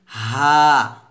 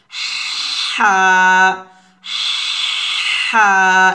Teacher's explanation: গলার মাঝখান থেকে বলতে হবে, তবে নর্মালভাবে বলা যাবে না, একটু চিকন করে চাপ দিয়ে বলতে হবে এভাবে হা হা এভাবে।